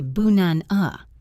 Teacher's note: The first and last a sounds turn into a lazy uh. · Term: schwa